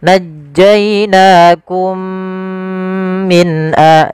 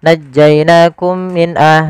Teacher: Idgham mimi terjadi apabila ada huruf mim sukun bertemu dengan mim setelahnya. Cara membacanya yaitu kita masukkan mim yang pertama kepada mim yang kedua kemudian ditahan dengan gunahnya.